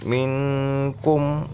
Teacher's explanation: dengan dengung ya atau menyamarkan ya ya satu atau setengah ya satu atau setengah Alif atau sekitar 2 sampai 3 harokat setelah itu baru masuk ke huruf sesudahnya